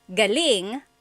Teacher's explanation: if the emphasis is on the second syllable galing that means good or great or excellent